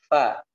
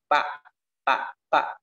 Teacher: tempat keluarnya huruf fa dengan menggunakan satu bibir dan ujung daripada gigi seri atas, ya. Fa, ya, disentuhkan sedikit.